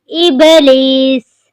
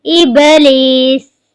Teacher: با پر قلقلہ ہو رہا ہے